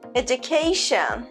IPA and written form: ˌedʒ.əˈkeɪ.ʃən (education)